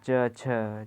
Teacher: तो हम लोगों का च, छ एक स्पर्श में च, छ जैसे आवाज रगड़ खाते हुए निकल रही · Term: स्पर्श संघर्षी